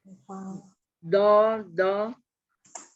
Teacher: dia bukan zo, ujung lidahnya tidak keluar.